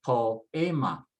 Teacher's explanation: And then following the usual stress rules, I would stress next to the last.